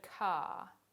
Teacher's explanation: for speakers of Australian English, say the word car. Did you hear the R sound at all? It's because you didn't say it.